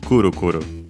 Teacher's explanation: kuru kuru is accented as most actual onomatopoeias on the first syllable